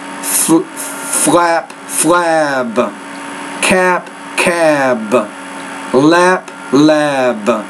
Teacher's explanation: you need to make the vowel sound a little bit longer when it precedes that voice consonant · So when the B is at the end of the word, the vowel sound should be longer, and that helps us distinguish these sounds